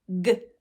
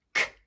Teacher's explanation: Produced the exact same way, but one has our vocal cords vibrating and one doesn't. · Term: voiced and unvoiced pairs